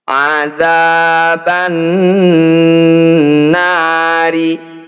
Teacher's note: Mad tabi'i bertemu huruf hidup dan dibaca berhenti, jadilah bacaan mad arid disukun namanya. Cara bacanya na kita panjangkan 6 harokat atau 6 ketukan. Huruf terakhir disukun atau dimatikan.